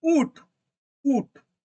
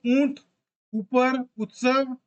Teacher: तो लीप जो है वो आपका राउंडेड होगा सर्किल शेप में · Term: हरसऊ